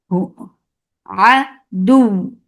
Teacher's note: A ain from your middle part of your throat.